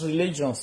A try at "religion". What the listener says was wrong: Religion. Religion. not religions.